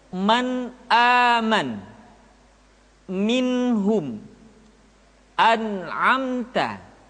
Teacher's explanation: Nun mati atau tanwin dibaca dengan izhar ketika bertemu dengan huruf a, ha, a, ko, dan g. Caranya nun mati atau tanwin dibaca secara jelas